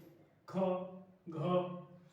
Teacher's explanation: महाप्राण होते हैं जिसके उच्चारण में अधिक श्वास निकलती है, महाप्राण व्यंजन कहलाते हैं।